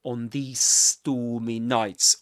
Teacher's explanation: you end up pronouncing one long s sound